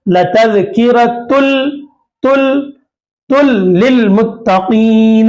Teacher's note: ये नून की आवाज को डायरेक्ट लाम में मिला देंगे, यहां पर लाम में मिला देंगे।